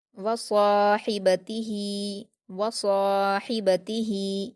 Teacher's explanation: यरौनहा, यरौनहा, यौम यरौनहा, यौम यरौनहा, वसाहिबतिही, वसाहिबतिही, वाव पर हरकतें जल्दी पढ़ेंगे, स्वाद पर अलिफ मद्दा है, 2 हरकत खींचकर पुर पढ़ेंगे